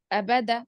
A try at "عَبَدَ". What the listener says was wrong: عین کا مخرج نہیں نکالا، عین کا مخرج نہیں نکالا، میں حمزہ سے پڑھا،